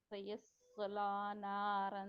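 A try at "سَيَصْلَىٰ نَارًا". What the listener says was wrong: आपकी सीन नहीं क्लियर, सुजसला आप करते हैं उसको, थोड़ा सा ना होल्ड कर जाते, होल्ड नहीं करना सीन को। इसकी सफीर की सिफत आने दें। स्माइल दें, थोड़ी सी स्माइल दें।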